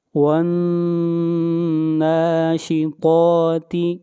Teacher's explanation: والنازعات غرقا، والناشطات، واو کو ملائیں گے نون کے ساتھ، نون کے اوپر غنہ کریں گے اور نون کو کھینچ کر پڑھیں گے ایک الف کے برابر